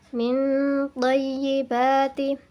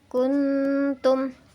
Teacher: Nun mati bertemu dengan ta, kuntum. Cara membacanya masih ada suara nun yang dibaca dengan mendengung